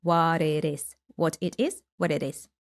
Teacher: American flap team. So basically T turns into a D sound.